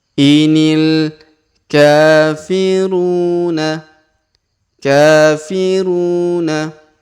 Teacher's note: huruf ka kita panjangkan dua harakat karena di atasnya terdapat Alif kecil